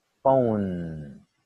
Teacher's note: Como la E no se pronuncia, terminamos con la N.